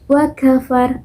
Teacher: ketika kita mengucapkan kata wa kafar, nah itu keluarlah hembusan angin ataupun udara ketika kita mengucapkannya